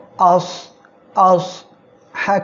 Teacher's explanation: সদ অক্ষরটা মোটা হয় এটা একটু মোটা করে উচ্চারণ করবেন চিকন করে উচ্চারণ করলে সিন এর মত শোনা যেতে পারে